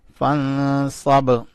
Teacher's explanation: نون کے اوپر اخفا کیا اور با کے اوپر کلکلا کیا